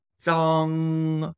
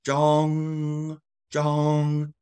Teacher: an a sound instead of an O